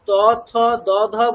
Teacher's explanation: ঠিক আছে আপনাকে যদি এখন চতে বলা হয় বলুন তো চ ছ চ ছ জ ঝ আপনি কোথা দিয়ে বলছেন ঠিক দেখুন জীবটা আমাদের মানে উপরের যে প্লেটটা আছে মুখের উপরের যে প্লেটটা আছে সেখানকার মাঝখানটাতে টাচ করছে যদি এখন ত থ দধ বলতে বলা হয় দেখুন জীবটা আমাদের দাঁতে গিয়ে টাচ করছে